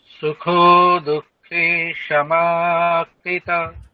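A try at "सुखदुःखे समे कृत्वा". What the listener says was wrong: আচ্ছা, দেখুন, ভালো করে দেখুন, স্পেলিং দেখুন কি আছে। সামে একার আছে, আপনি আকার বলছেন। আবার একার আছে, আমি একার উচ্চারণ করব। আচ্ছা, সমে কৃত, ভালো করে দেখুন একটু। আপনি সমা বলছিলেন বা মানে একারটা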